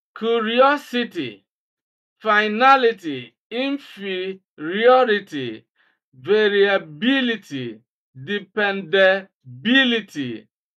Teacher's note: they almost always have antepenultimate stress, that is, stress on the third syllable from the end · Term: anti penultimate stress